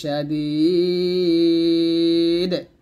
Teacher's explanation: এই যে দাল ইয়া যে দি জের পর জসমলে এটা মাদে হরফ, মাদে হরফের পরের হরফ এই যে ওয়াকফ আসছে, যে কারণে আমরা এখানে থামছি, থামার কারণে সে মাদে 3 আলিফ টান দিয়ে এই দালটাকে সাকিন করছি। আর দাল যেহেতু কলকলা হরফ, তাই এখানে আমি ওয়াকফ ধরছি এবং কলকলাও করছি, তো এখানে 3 আলিফ টান দিয়ে দালটাকে সাকিন করে ওয়াকফ ধরতে হবে, কলকলা করতে হবে।